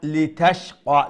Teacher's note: أعوذ بالله من الشيطان الرجيم بسم الله الرحمن الرحيم طه ما أنزلنا عليك القرآن লিতাশকা, লি লম্বা করবেন না, এখানে লামজের লি এটা হলো হরকত। লিতাশকা, জি।